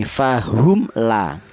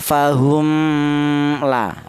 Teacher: Cara bacanya mim matinya dibaca izhar atau dibaca jelas. Fahum la. Jadi artinya izhar itu jelas ya, tidak samar ya. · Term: izhar syafawi